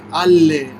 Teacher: This final L. You need to use a final L from the al, which is the same L in the beginning of le. Ale. It's like the sound is traveling.